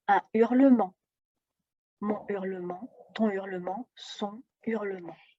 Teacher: son hurlement ce qui est important ici c'est de retenir que le h aspiré comme tout les consonnes interdit la liaison et l'élision